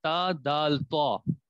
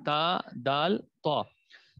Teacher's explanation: تا دال تو یہ دیکھیں اس کے مخرج میں ہم نے بنیادی طور پہ یہ پڑھا ہے کہ زبان کی نوک جب اوپر والے دو دانتوں کی جڑ سے لگے، اس سے تا دال تو نکلتا ہے